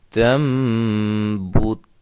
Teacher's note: جو آخر میں تا ہے اس کو ہلانا نہیں ہے کیونکہ یہ حروف قلقلہ میں سے نہیں ہے